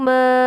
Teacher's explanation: Ma panjang mad jaiz munfasil, kira-kira 2,5 alif atau sama dengan 4 sampai 5 harokat atau 5 ketukan.